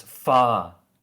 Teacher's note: you kind of just extend the vowels yeah the vowel's length it's far yeah the r is not pronounced · in like most British accents R isn't pronounced it's only pronounced like between vowels